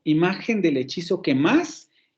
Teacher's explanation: y vuelve a caer el acento en la octava sílaba